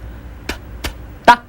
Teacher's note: So, ta, tsya, ta, tsya. For ta, the tongue on top of your upper teeth.